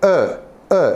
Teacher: o sound is from put together start with the uh uh where your lips are a bit like an oval shape and the sound is coming from the back of your mouth